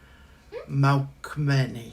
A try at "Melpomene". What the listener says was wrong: No. There's no K in there. Melpomene.